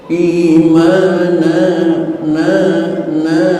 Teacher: imana na na mad iw arti mad panjang iw tukeran dari tanwin karena mata kita melihat jelas di situ ada tanwin tapi kuping kita jelas mendengar di situ ada panjang